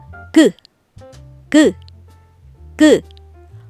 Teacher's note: 그 그를 말하려면 혀가 안쪽으로 구부러지면서 목구멍을 막고 준비해야 해요. 이때 혀의 모양이 딱 기역 모양처럼 만들어지죠.